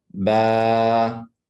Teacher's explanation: With the alif saghira, it becomes 2 seconds.